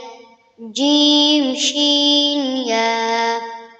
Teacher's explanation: ৬ number মাখরাজ, জিহ্বার মধ্যখান তার বরাবর উপরে তালুর সঙ্গে লাগাইয়া